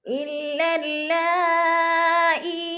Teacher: حمزہ اسی کلمے میں ہے تو ادھر مد متصل ہے، 4 حرکات کے برابر اس کو کھینچ کر پڑھنا ہے